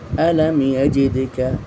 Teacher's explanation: এটা মিম সাকিনের ইজহার কারণ মিম সাকিনের পর ইয়া এসেছে এই জন্য এখানে কোনো গুণনা হবে না